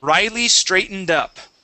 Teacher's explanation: nice job jumping over that t that was really good